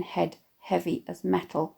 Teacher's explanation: the assonant /eh/ in “head heavy as metal” also give the line a feeling of weightiness